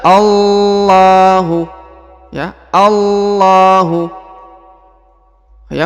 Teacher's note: huruf alif langsung ke huruf lam yang berharakat tasdid dan juga dipanjangkan dua harakat karena di sini terdapat Alif kecil